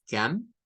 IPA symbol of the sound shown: ə